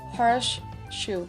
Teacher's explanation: S becomes sh when followed by sh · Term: regressive assimilation